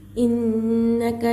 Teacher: नून में तस्दीद आकर है, नून मुशद्ददा इसमें गुन्ना होगा और ये जो हरकत आकर है इसे है ना जल्दी जल्दी अदा करना है।